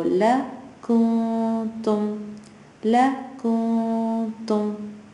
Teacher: Nun sakin is followed by a ta. It's not one of the huroof halaqi letters. It's going to hide.